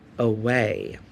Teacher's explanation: it has that schwa sound at the beginning, but that first sound is uh and then u way away.